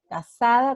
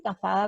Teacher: Pronunciamos igual la S y la Z, la C con E o con I.